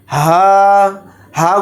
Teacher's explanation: हा को भारी आवाज में पढ़ेंगे सीने से अदा करेंगे · ہا کو بھاری آواز میں پڑھیں گے، سینے سے ادا کریں گے اس کو، یہ چھوٹا ہا ہوتا ہے۔ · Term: छोटा हा